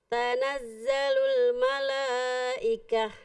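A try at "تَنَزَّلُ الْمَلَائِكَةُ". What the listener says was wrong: Oke, bagus.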